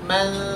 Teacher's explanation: Nun ini dibaca dengung tetapi dengan syarat sambil mempersiapkan bibir kita ke huruf berikutnya